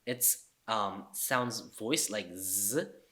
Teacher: So beads, although it's spelled s, it's sounds voiced like z. So this is like z in zoo.